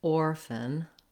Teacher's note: in the word orphan, we don't have much in the way of a vowel sound in the last syllable. You'll probably have a little bit of a schwa sound here, but you might even see it in the dictionary in the IPA with just the F and the N. · So these words have the stress on the first syllable, or, and the letters OR do say the or diphthong. So you want to have a clear vowel there and a little bit of length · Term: reduced vowel